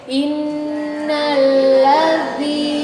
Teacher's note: Baru ujung lidahnya dikeluarkan di huruf dza.